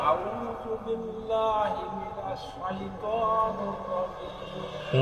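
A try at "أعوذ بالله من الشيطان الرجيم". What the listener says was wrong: না, আউ না, আউ। আর শাইতানুর না, নির। শাইতানির রাজিম।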